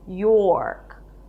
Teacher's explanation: Then you have a Y sound and the OR as in for, York, and end it with a K sound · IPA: jɔ:rk